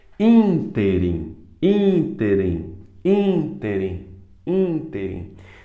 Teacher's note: Mas é a única proparoxítona que não tem acento. Ínterim, ínterim, ínterim, ínterim. Então o in é mais forte